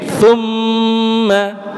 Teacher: Paling depan hurufnya tsa. Jadi bukan summa tetapi tsu tsa tsu tsa. Lidahnya keluar sedikit Pak Bu.